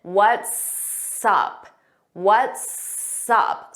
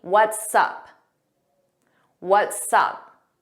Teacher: it sounds like one word and you hear that S on what's and sup. We put it in front of up.